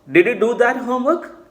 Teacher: question tone is coming when it is low rising